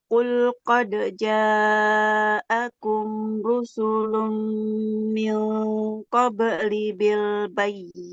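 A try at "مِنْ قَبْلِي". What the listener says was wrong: qabli lamnya panjang kan?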